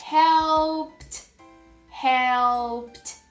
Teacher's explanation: Every time I have a regular verb ending in P, I will add E ed. And this ed will make the T sound. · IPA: /t/